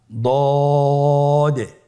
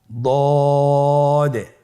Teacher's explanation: জিহ্বার গোড়ার কিনারা সামনের উপরের দুই দাঁতের গোড়ার সঙ্গে লাগিয়ে উচ্চারিত হয় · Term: দদের মাখরাজ